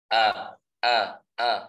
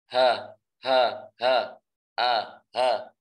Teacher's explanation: Jadi dari tenggorokan yang paling dalam, paling bawah itu adalah makhrajnya huruf hamzah dan huruf ha.